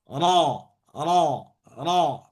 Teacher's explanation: ketika ro tanpa melibatkan bibir tapi pangkal lidah yang naik. Bukan ro. R ro. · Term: tebalnya